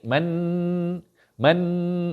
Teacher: Kalau bunyi man, hujung lidah kena kat langit. Man itu bunyi nun.